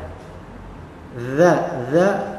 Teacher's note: lidah yang menempel pada gigi seri atas dua gigi seri atas ini ya dza dza Dho tsa seperti